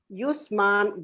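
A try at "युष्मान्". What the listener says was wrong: Not yus. Not yus. Yush. Yushman. Shakara is more than yusha. Read again, Dvitiya.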